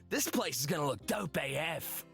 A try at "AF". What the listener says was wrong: Please don't pronounce AF. You just say as fuck. Verbally you say as fuck.